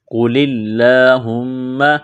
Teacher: قاف کو موٹا کرنا ہے، اسلام کو لام کے ساتھ مس کرنا ہے، لام لام زیر لیل لام کڑا زبر لا، قل اللہ میم پیش ہم میم زبر ما، میم مشدد ہے غنہ کریں گے، آواز ناک میں چھپائیں گے